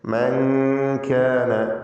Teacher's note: സക്കിനത്ത നൂനും ശേഷം കാഫും ഇഖ്ഫാ ഹഖീഖി അവ്യക്തമാക്കി മണിച്ചുച്ചരിക്കുക.